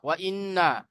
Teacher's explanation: ওয়াও জবর ওয়া, হামজা নুন জের ইন, ওয়া ইন নুন জবর না, ওয়া ইন্না নুনের উপরে তাজদীদ এসেছে, নুন মুসাদ্দাদ গুন্না ওয়াজিব, আগের অক্ষরের সাথে মিলিয়ে পড়ার সময় গুন্না করব। তাহলে এখানে একালি পরিমাণ গুন্না হবে।